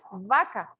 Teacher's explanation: la vaca es con B labiodental